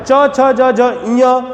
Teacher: च छ ज झ ञ ये तालव्य ध्वनियां हैं और च वर्ग कहा जाता है, च छ ज झ ञ को च वर्ग की ध्वनियां कहा जाता है।